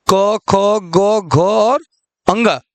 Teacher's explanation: जो क वर्ग है वह कंठ से उच्चारण किया जाता है